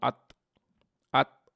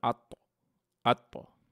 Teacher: এই আত শব্দটাকে সঠিকভাবে শোনানোর জন্য আপনার মুখটাকে একটু বাড়ি দিয়ে শব্দ বের করে নিয়ে আসতে হবে, এবং এই বাড়ি দেওয়াটাকেই বলে কলকলা।